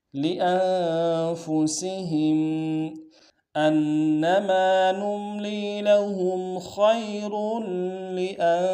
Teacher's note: فا کو نون سے ادا کریں گے، سین کی سیٹی باریک ہوگی